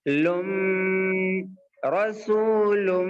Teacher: مع الغنہ کا مطلب ہوتا ہے کہ تنوین نون ساکن کے بعد میں اگر یا واو میم نون، یا واو میم نون آئے تو نون کی آواز کو ناک میں تھوڑا سا چھپا دیں گے اور روک لیں گے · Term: ادغام مع الغنہ